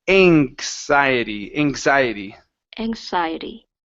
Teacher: a KS right okay but because it's moving from an N because it's moving from an N it it changes that K to more of a g sound